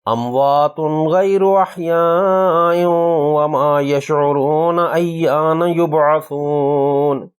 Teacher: اموات غیر احیاء، اس میں تا کی پیش کی تنوین کے بعد غین حروف حلقی ہے، قاعدہ کے مطابق اظہار ہونا چاہیے، تنوین پر اظہار کریں گے، ایک حرکت لمبی نون کی آواز سے اور پڑھیں گے